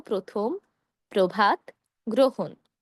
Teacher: শব্দের শুরুতে যদি আপনি অধ্বনি দেখেন, অধ্বনি এর সঙ্গে যদি রফলা থাকে, তাহলে আমরা ওকার দিয়ে উচ্চারণ করব।